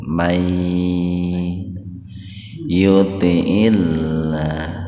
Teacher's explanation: Wa may idgham bi gunnah, nun mati ketemu ya, jadi membacanya huruf nun dimasukkan ke ya dengan mendengung, tahan dua ketukan · May yuti'illah tarkik itu kebalikan dari tadi tafhim. Tarkik itu tipis ya, karena lafaz Allah atau lebih tepatnya huruf lam didahului kasrah.